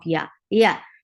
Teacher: lifting the middle or part of your tongue towards your palate but you are not touching it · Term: soft letter